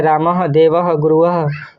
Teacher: विसर्ग का उच्चारण ह के सदृश में किया जाता है।